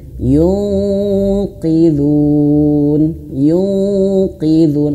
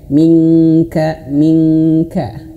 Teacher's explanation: Kesalahan yang sering sekali adalah ketika nun mart bertemu huruf qof ini hanya sekedar didengungkan saja. Harusnya dengung persiapan ke huruf qof plus tebal.